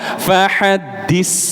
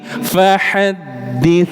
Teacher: Jadi bukan fahadis, ini sin, tapi fahadits. Lidahnya keluar sedikit Pak Bu, huruf tha.